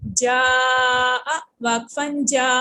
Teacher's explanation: یہ تب آتی ہے جبکہ الف مدہ مدہ لیٹر، اب یہ الف مدہ ہے نا چونکہ اس کے پہلے زبر آ رہی ہے، تو جب مدہ لیٹر کے نیکسٹ میں حمزہ لیٹر آ جائے تو پھر یہ مد متصل آتی ہے، اور اس کو کھینچ کے پڑھتے ہیں